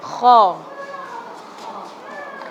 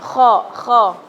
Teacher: Nah, kho ini suaranya dari tenggorokan. Pegang, ibu-ibu bisa pegang aja tenggorokannya.